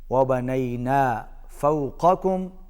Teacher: قاف کو موٹا ادا کیجئے